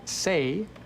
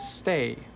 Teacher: A common example is the word say versus stay. The difference between say and stay is actually a little pause right when the T happens.